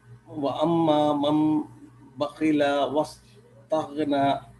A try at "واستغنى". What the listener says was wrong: السين not صاد. واستغنى.